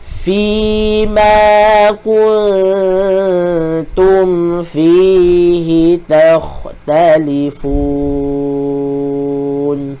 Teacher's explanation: bukan dengung dia di bibir, dia di kawasan hujung lidah